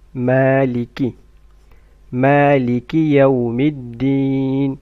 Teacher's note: Make sure that you don't stretch the kasra of kaf.